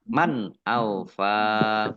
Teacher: nun sukun bertemu dengan huruf alif, bacaan izhar dibaca jelas